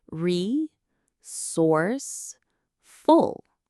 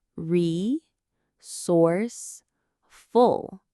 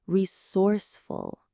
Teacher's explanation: The stress is right in the middle on that source part.